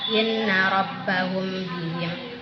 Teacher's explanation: Jadi ikhfa syafawi yaitu samar-samar di bibir apabila ada mim sukun bertemu dengan huruf ba, maka cara membacanya sedikit didengung.